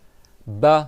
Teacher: Ba, c'est les 2 lèvres qui s'entrechoquent